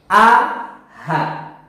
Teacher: Yang benar adalah H ditaruh di tenggorokan, persis di bawah zakun kita. A, H. Tidak boleh H, nggak boleh, ya. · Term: aqsal halqi